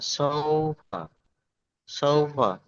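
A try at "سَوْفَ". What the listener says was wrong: সৌফা নয়, সৌফা হলে তাহলে সদ হয়ে যাবে, ঠিক আছে। আমরা পড়েছি সদ জবর স আর সিন জবর সা, তাই না? সদ ওয়াও জবর সৌ হবে আর সিন ওয়াও জবর সাউ হবে, সাউফা।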